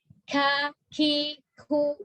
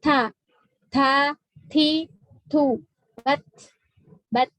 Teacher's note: Kaf dengan ta itu hames, tapi satu sisi dia syiddah.